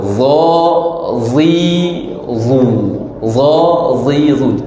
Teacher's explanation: huruf dha, hujung lidah antara 2 gigi.